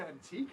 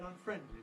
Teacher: there's no question the main stress is on te and on friend in the basic form of these words